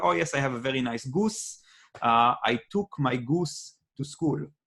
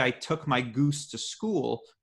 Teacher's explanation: you'll notice that my lips are much more round in my American accent. If I were to do this in a British dialect, I would say I took my goose to school, which is even rounder than my American accent. · You'll notice that my lips didn't round very much on any of this. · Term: Israeli accent